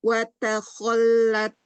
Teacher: Terlalu berlebihan taknya, hati-hati. Angin aja sedikit ya.